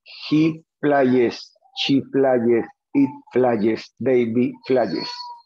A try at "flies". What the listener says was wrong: tú estás diciendo flies como dos sílabos. Solo es un sílabo, flies.